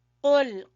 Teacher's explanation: قاف کو زبان کی جڑ سے ادا کریں گے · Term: موٹا قاف